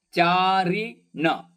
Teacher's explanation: ಚಾ ದೀರ್ಘಪದ, ರಿ ಮತ್ತು ಣ ರಸ್ವ, ಶಕ್ಕೆ ಚ ವ್ಯಂಜನ ಇರೋದ್ರಿಂದ ಣ ಮೇಲೆ ಆಘಾತ, ಚಾರಿಣಶ್ ಈ ತರ.